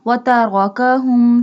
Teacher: Here ra has a fatha sign, so we bold it.